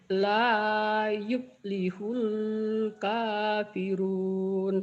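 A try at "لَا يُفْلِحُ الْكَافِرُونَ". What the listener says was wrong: Hulnya jangan ditahan ya. La yuflihul kafirun. Hulnya jangan ditahan lamnya.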